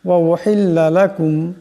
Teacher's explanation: এই মিম সাকিনকে একালি পরিমাণ গুণনা করিয়া পড়তে হবে। লাকুম এমন করে।